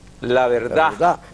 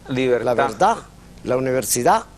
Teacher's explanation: Pero es que es un sonido débil, esa D dental es un sonido débil, va a terminar desapareciendo